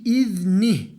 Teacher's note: uzatma olsa bile arızi Sükun koyduğumuz için yani burada durduğumuz için H harfini uzatmadan duruyoruz sesini verip bırakıyoruz